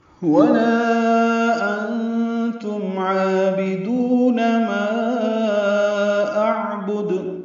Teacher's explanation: لام مد منفصل ہے، 4 حرکات لمبا کریں گے